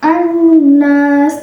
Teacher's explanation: hukum bacaan gunnah karena ada nun yang bertasydid. Cara membacanya digunakan atau didengungkan 2 ketukan. · alif lamnya tidak dibaca, jadi kita langsung membaca ke huruf syamsiyahnya yaitu nun. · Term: alif lam syamsiyah